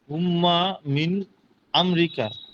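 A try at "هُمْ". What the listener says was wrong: হুম হুম শুধু হুম, তাসদিদ নেই,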